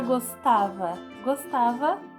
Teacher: gostava tem o tá como sílaba tônica